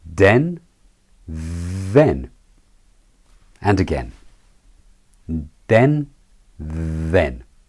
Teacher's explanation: Let's say a few words the old way with a d sound first, and then the new way with the voiced th.